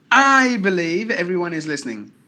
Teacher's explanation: So if I stress the word I, that means I'm talking about only my belief, not about anybody else's belief.